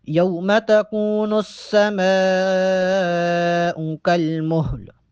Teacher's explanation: میم پہ بڑی مد ہے، میم کو 6 الف کے برابر لمبا کر کے پڑھیں گے